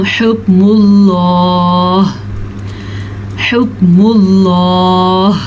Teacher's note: کاف پہ قلقلہ نہیں کرنا کیونکہ یہ باریک کاف ہے۔